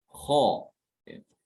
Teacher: Ketika mengucapkan kho itu pangkal lidah itu naik ke atas ya, sehingga suaranya itu terdengar tebal. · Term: al-isti'la